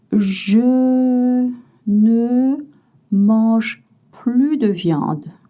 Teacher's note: Vous ne prononcez pas le S quand la signification est not anymore, no longer.